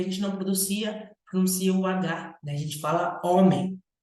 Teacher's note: A palavra homem já é o contrário da palavra táxi, tem um fonema menos, porque a gente não pronuncia o H